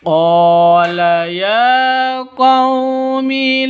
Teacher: Jadi sama-sama mad asli. Qaumi, qaw sifat lin lentur lemes ya, tidak boleh dipanjangkan, tidak boleh disentak seperti itu.